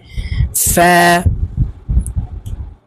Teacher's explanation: নিচের ঠোঁটের পেটের সঙ্গে ফা হরফ উচ্চারণ করতে হবে